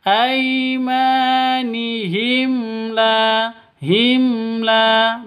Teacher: Cara bacanya jelas, terang, tidak boleh disentak, tidak boleh dipanjangkan karena bacaan izhar safawi. Aimanim la himla langsung ya.